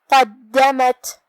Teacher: آخر میں تا ساکن ہے تو یہاں ہمیں تا کو ہمس سے ادا کرنا ہے. ہمس کا معنی ہے کہ حرف کی آواز ایسے کمزور ہو کہ اس میں پستی پائی جائے.